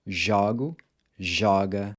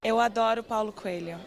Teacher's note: the pronunciation of the O changes from close to open